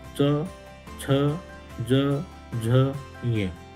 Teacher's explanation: तालु से, और इसलिए इनको तालव्य वर्ण कहा जाता है।